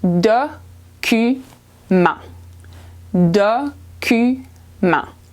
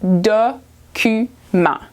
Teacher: The T is silent at the end, so it becomes document.